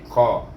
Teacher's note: Selepas kita izhar kamarikan dia, kemudian kita baca qaf baris atas bunyi qaf, bunyi qa, terangkat pangkal lidah kita. Qa, jangan baca ka.